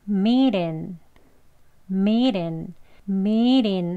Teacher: 정말 부드럽게 발음을 하기 때문에 리을 소리에 가까운 발음으로요. r, 여기 치경 위치 혀 대시고요. t 대신에 르르 이렇게 부드럽게 발음합니다. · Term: soft d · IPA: /miːt ɪn/